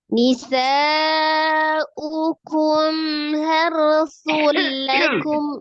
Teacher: Sifat huruf mimnya itu antara sidah dan roqa, jadi tawasud atau bainnya, mengalir sebagian, maka dialirkan dulu sebagian gitu ya. Jadi jangan dijeda ya, jangan dijeda tapi juga jangan ditahan. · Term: izhar safawi